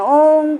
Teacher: हमने सुनो को खूब लंबा खींच दिया यानी तीन मात्रा का समय लेना चाहिए कभी-कभी हम 10 मात्रा भी लगा देते हैं तो मतलब कहने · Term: दीर्घ उच्चारण